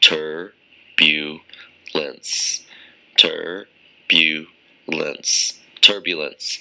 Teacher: It's three syllables, and the stress is on the first syllable.